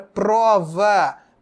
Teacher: prova palavra prova tem duas sílabas pro e vá olha só pro é a sílaba átona vá é a sílaba tônica